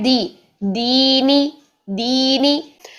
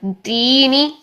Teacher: अगर दाल की डी की साउंड नहीं रखेंगे ना तो ये ता में चले जाएगा, दीनी ऐसा हो जाएगा, ऐसा नहीं करना।